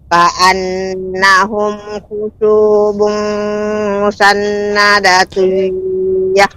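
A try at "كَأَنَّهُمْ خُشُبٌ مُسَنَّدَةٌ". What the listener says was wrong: Berhenti pada musannadah Ibu. Ka'annahum khushubun musannadah. Khushubun musannadah.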